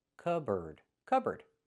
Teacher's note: So, the P is silent.